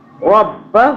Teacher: را کو جو ہے ہمیشہ منہ بھر کے پڑھتے ہیں، پر پڑھتے ہیں، را باریک نہیں پڑھتے